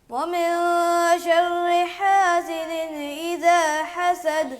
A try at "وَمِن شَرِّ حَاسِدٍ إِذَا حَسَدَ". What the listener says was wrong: ایسا نون کو بھی ہلا رہا ہے، حاسدین. کلکلا کر رہے ہیں.